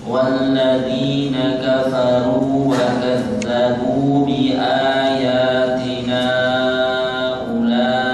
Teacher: jangan kepanjangan, kita ngambil 4 harokat saja ya